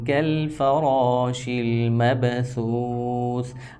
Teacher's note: سا کو ہم سین کی طرح نہیں آواز دے رہے ہیں، بالکل نرم ہی پڑھ رہے ہیں